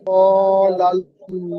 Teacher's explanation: আল্লাহ শব্দের লাম মুসাদ্দাদের আগে জাবার এসেছে, তাই আল্লাহ শব্দের লাম মুসাদ্দাদকে পুর অর্থাৎ ল পড়তে হয়।